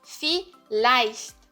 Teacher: o V tem som de F em alemão.